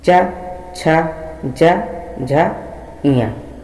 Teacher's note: च छ ज झ इया को बोलेंगे तो हमारे तालु के अग्रभाग में हमारी जीभ जो है वो टच होती है